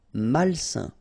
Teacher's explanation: A-I-N together, it's a nasal and it's un.